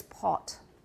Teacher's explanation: But in British English, they do have a lower back, somewhat rounded vowel.